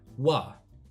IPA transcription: wa